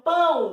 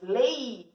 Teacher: primeira vogal você pronuncia num som mais forte, depois a segunda vogal num som mais fraco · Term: ditongo decrescente